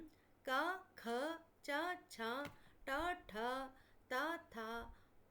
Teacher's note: ర క వర్గంలో క ఖర్గంలో ఛ ఛ ట వర్గములో ట ఠ ట వర్గంలో త థ ప వ వర్గంలో ప ఠ మొత్తము 10 విశేషంగా అఘోష వర్ణముల ఉచ్చారణలో మన స్వరతంత్రులు దూరం దూరంగా ఉండటంతో ఒకదానితో ఒకటి డీ కొనక ఘర్షణ అనేది ఏర్పడదు మరియు స్వరతంత్రంతులలో కంపనం అనేది జరగదు అందుకే ఈ అక్షరములను అఘోషలు అంటారు.